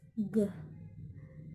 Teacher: The place of articulation is velar. The manner of articulation is plosive. The G sound include voice.